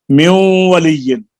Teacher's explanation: نون کا واو میں ادغام غنہ کے ساتھ